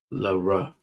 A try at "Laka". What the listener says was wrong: It's not a ra. Too tall to be a ra.